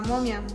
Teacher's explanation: palabra momia si tocamos nuestra garganta vibra verdad esto es porque la articulación de la m provoca que se muevan las cuerdas vocales y que el aire en lugar de salir por la boca